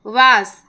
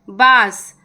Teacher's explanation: व का उच्चारण स्थान दंतोष्ठ है, अर्थात दांत और ओठ के संयोग से व का उच्चारण होता है, और ब का उच्चारण दो ओठों के मेल से होता है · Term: व और ब का उच्चारण